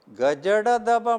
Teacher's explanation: ग ज ड द ब म्हणटना स्वर तंतू मागिरी लागी आयलें वाऱ्याक वाट उणी जाली तेदन वारें फोर्सार येतना एक नमुन्याचें कंपन जाता. अशी कंपनांनी घडची हें व्यंजनांक आमी घोश व्यंजन म्हणटा.